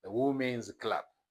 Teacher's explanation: ም ሳውንድ is a voiced sound so women's ብለን ዝ ይሆናል ማለት ነው ፕሮናንስ ስናደርገው